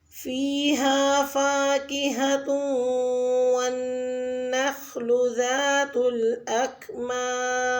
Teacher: فاکہۃ والنخل میں واو مشدد اور نون مشدد پر غنہ ہوگا